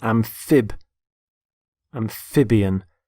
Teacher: notice the stress on the middle syllable